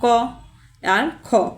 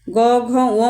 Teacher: ক, খ মনে রাখবো অঘোষ। গ, ঘ, ও মনে রাখবো ঘোষ।